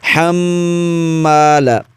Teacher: یہاں پر دیکھیے میم پر شد ہے، غنہ ضرور کریں گے، ہا کو حلق کے درمیانی حصے سے ادا کریں گے